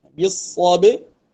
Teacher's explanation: ba dibaca nipis sebab dia ada sifat istifal dan infitah, dia tak ada sifat isti'la, baca nipis lah.